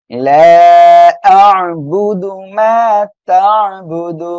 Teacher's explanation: লাম আলিফ জবর লা, এখানে তিন আলিফ টান হবে, মধ্যে মুনফাসিল। এই যে জবরের বামে খালি আলিফ এক আলিফ মদ, এর পরে পৃথক শব্দের শুরুতে হামজা আসছে, তিন আলিফ টেনে পড়বো।